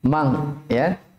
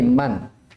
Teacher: Kalau bahasanya se-n. Jangan NG ya.